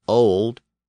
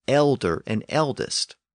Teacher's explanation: Old English word was L with a short vowel and again that l d at the end pulled on the vowel and made it long over time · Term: long vowel